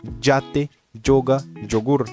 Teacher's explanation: O resto dos países, por exemplo, o México, Bolívia, geralmente pronuncia como o som de DJ junto.